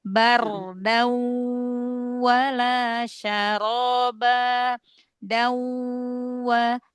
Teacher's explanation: Idgham bi gunnah, suara gunnahnya 50%, suara hurufnya 50%. Berarti di sini dawa, wawunya terdengar 50% ya.